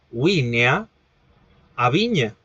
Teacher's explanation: ese grupo constituido por el nasal alveolar sonoro más yot al nasal palatal sonoro